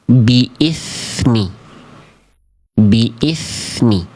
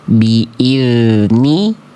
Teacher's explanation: Kalau dal harus enggak boleh keluar angin, enggak boleh keluar udara atau nafas.